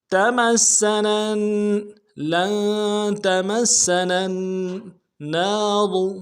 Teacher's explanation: سیٹی باریک ہوگی، اگلی سین کو نرمی سے ادا کریں گے، نون کو اگلے نون کے ساتھ ملانا ہے، نون کے اوپر تشدید زور دیں گے ، تمسنا، لن تمسنا النار، اگلے نون کے ساتھ الف مدہ